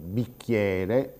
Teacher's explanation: pronunciamo queste vocali aperte perché nelle sillabe successive soprattutto nella sillaba finale c'è una vocale aperta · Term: metafonia